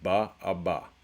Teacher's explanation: So if we start at the top, we have bilabial plosives, right? That's both lips together, and plosive is an obstruction of the airflow. Unvoiced is ba, a ba.